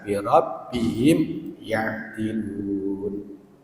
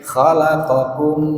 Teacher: Kalau yang bi rabbihim itu diidharkan, bacanya jelas ya.